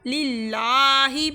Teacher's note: ہم نے اس لفظ اللہ کے لام کو ہم نے باریک پڑھا ہے